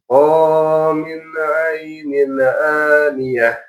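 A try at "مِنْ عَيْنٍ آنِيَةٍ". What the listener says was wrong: Nunnya sempurnakan. Min ainin jelaskan. Mana hukumnya? Kasrotain ketemu Izhar juga.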